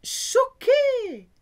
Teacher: So CH in French is a sh sound, not a ch, like in English.